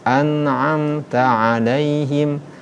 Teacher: Ain ini tawassut di tengah-tengah. An'amta alaihim, tidak syiddah dan tidak rahawa, tidak berjalan.